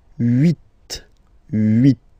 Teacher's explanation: this H letter here, okay, doesn't exist phonetically, so we don't really pronounce it